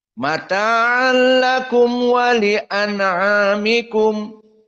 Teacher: Tidak ada di sini al-imalah al-kubra dan tidak ada di sini juga at-tafkhim. Semuanya muraqqaqah, datar.